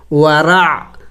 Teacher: عین حروف حلقی میں سے ہے اور وسط حلق سے ادا ہوگا، یعنی حلق کے درمیانی حصے سے